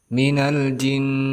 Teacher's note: gunnah musyaddadah, artinya didengungkan dengan 2 harokat